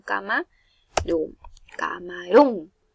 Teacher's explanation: La mayor fuerza de voz recae en la ron y lleva tilde porque es una palabra aguda y termina en N.